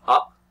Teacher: the mouth is open, really open, and the sound comes from the back part of the mouth